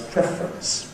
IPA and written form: ˈprefrəns (preference)